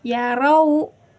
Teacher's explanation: karena ro-nya berharokat patah, berarti hukum pembacanya itu tafhim. Berarti harus tebal ya, teman-teman.